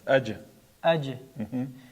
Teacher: Agar qalqala qilmasak, j emas, ch harfi bo'lib qoladi.